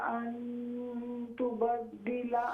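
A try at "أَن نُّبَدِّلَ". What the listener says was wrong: हाँ जी, ये नून है, अला अन नुबद्दिला।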